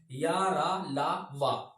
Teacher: अल्प प्राण और सघोष है अंतस्थ व्यंजन